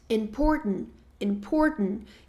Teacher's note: A gente acaba não pronunciando esse t